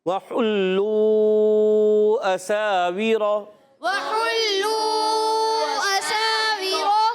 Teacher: سین کو سیٹی کے ساتھ مد بھی کریں گے